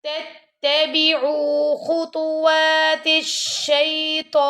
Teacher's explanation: خا کو بھی موٹا پڑھیں گے اور تو کو بھی موٹا پڑھیں گے، اور آپ کے لپس لائک راؤنڈ شیپ ہونے چاہیے. تتبعوا، عین کے ساتھ واو مدہ آ رہا ہے تو اس کو ہم نے 2 سیکنڈ تک لمبا کرنا ہے.